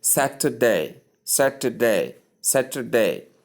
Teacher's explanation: The middle vowel is soft but it's pronounced.